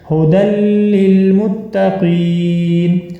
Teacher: ہدی للمتقین، اب یہاں پر ہا کے اوپر موٹی ہا پڑھی جائے گی اور ہا کے اوپر ہے پیش، دال کے اوپر آپ کو 2 زبر نظر آ رہی ہیں، آگے جو ہے یا لکھی ہوئی ہے، یہ یا نہیں پڑھی جائے گی۔ دال کو آپ ڈائریکٹ ملائیں گے لام مشدد کے ساتھ